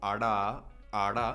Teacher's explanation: The retroflex one, again, is I can't do very well, but it's that sort of curled back tongue where it kind of taps